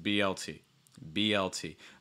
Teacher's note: notice the linking between the b and the l it's not b l b l that's not linked at all